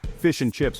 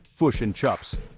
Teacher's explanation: Fish and chips becomes fush and chups, but it's not Aussie. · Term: short I shift